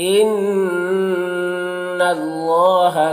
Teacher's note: अल्लाह के लाम को पुर पढ़ेंगे